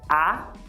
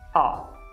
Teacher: Pessoal, seguinte, essa vogal é muito parecida com o nosso A do português. Mas no português, o nosso A, ele é um pouquinho mais baixo e ele também é um pouquinho mais anterior. Ou seja, você pronuncia ele um pouquinho mais na frente do trapézio do que o O do inglês.